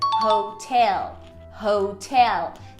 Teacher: muitos alunos vão acabar colocando essa ênfase em ho, but it's actually in tel.